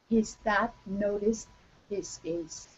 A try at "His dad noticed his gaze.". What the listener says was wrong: Okay, all right, that's pretty good. A little bit stronger T sound. His dad noticed his gaze.